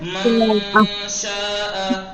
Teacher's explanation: मन शाआ, नून का इदगाम, नून का वो मखरज छिपा रहे हैं ना, छिपा के नाक से अदा कर रहे हैं। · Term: इख्फा